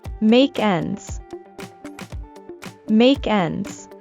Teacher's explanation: In fast speech, we link the ending sound in make with the initial e in end.